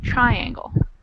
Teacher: The accent on the word triangle is in the first syllable